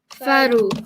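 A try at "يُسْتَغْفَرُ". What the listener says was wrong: Faru. Nicely done.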